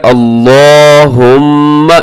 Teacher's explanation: اس کو اپنے موٹا بھی پڑھنا ہے لام کو اور لمبا بھی کرنا ہے